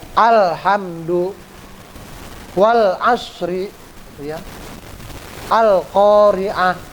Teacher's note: kalau yang alnya kehidup, terdengar, terbaca, itu al-qamariyah namanya